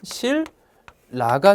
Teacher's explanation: 니은이 역시 리을로 변했습니다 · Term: 유음하다